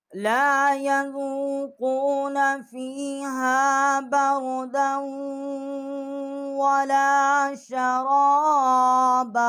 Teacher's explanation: دال کو ہم نے واو کے ساتھ مشدد کیا ہے اور یہاں ہم نے غنہ کیا ہے